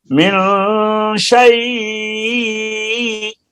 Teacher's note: اس میں یائے لین ہے اور حرف لین کے بعد وقف کی وجہ سے حمزہ ساکن ہوا ہے